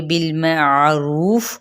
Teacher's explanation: بالمعروف، میم کی زبر کو عین کے ساتھ، عین کو وسط حلق سے ادا کرنا ہے، رو پہ مد اصلی بالواو کا قاعدہ، فا پہ جب ہم وقف کریں گے تو وقف بالاسکان اور ساتھ ہی فا پہ ہمس ہوگا